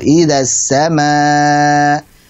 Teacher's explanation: Baca 4 harakat karena mad wajib muttasil.